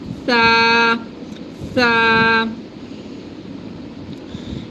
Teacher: we touch our tongue tip to the bottom edge of the front upper center two teeth and say tha. There's no whistling sound.